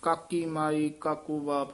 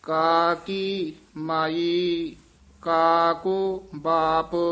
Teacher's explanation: ਕਾ ਕੀ ਜਿਹੜਾ ਪਾਠ ਹੈ ਇਹ ਸੰਬੰਧਕ ਹੈ, ਲਮਕਾ ਕੇ ਬੋਲਣਾ ਹੈ। ਕਾ ਕੀ ਇਥੇ ਯਮਕ ਲਾ ਦੇਣੀ ਹੈ।